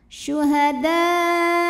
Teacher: Mad thiinya Alif yang didahului fathah hamzahnya a pada kata syuhadaa maka Dal dipanjangkan boleh empat boleh lima harakat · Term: mad wajib muttasil